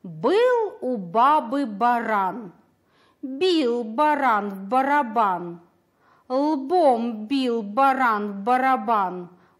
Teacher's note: Звук «Б» при произнесении встречает преграду – губы. Значит, звук «Б» согласный.